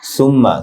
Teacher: সা নরম হবে, মিমে গুন্না, তা এক আলিফ লম্বা হবে, বু এক আলিফ লম্বা হবে।